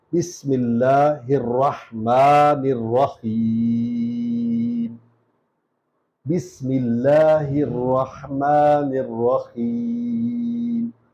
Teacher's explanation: سین کو سیٹی کی آواز سے پڑھنا ہے